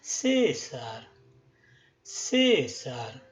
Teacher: como la primera sílaba es la sílaba tónica lo que vamos a hacer es darle un tono más agudo y a la segunda que tiene que no está acentuada un tono más grave